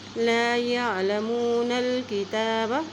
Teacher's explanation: نون کی زبر کو لام کے ساتھ ملا رہے ہیں کیونکہ لام کے اوپر جزم ہے